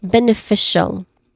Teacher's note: Fee is the stressed syllable here.